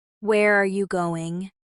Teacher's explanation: But with wh questions like, where are you going? The pitch usually falls at the end. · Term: Falling pitch